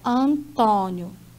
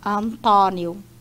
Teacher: Nós optamos pela escrita, ó, Antônio, com esse timbre do O fechado.